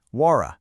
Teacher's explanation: The T in what is now between two vowel sounds. So it flips to an R sound. Wara. And the D at the end of need links right into is and softens.